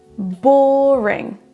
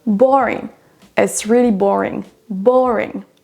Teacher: La première syllabe est prononcée plus fort que les autres.